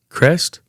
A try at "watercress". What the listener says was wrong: Watercress. Cress. C-R-E-S-S. Water, not tea. Cress. No tea.